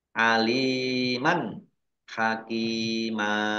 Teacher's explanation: fathah tanwin bertemu dengan huruf k bacaan izhar dibaca jelas